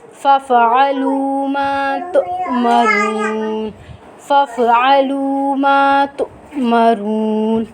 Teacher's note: الف سے پہلے حرف کے اوپر زبر ہے تو یہ الف مدہ ہے. الف مدہ کو ہم ایک الف کی مقدار کھینچ کے پڑھیں گے